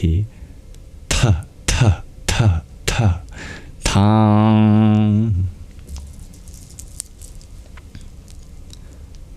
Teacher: It's a hard sound. Not a TH as in English, but an aspirated T.